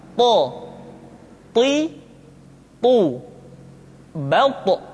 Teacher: th diucapkan dengan menyentuhkan ujung lidah dengan gusi-gusi dua gigi seri bagian atas · ketika to diucapkan, suara kita terdengar menebal.